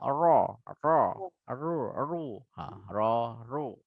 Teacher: Yang penting ketika rok tafkhim, lidah kita naik tebal gitu ya.